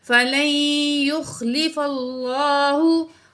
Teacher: تو یہاں بھی دیکھیں لفظ اللہ سے پہلے کیا آ گیا، پچھلے لفظ پر زبر آ گیا، تو ہم نے کیا کرنا ہے، لفظ اللہ کو موٹا کر کے پڑھنا ہے